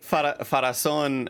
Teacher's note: you put the acento at the final syllable